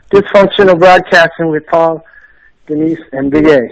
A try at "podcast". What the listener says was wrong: Yeah, it's podcast, not broadcast. Podcast.